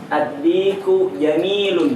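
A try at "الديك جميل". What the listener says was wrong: Bagus sekali.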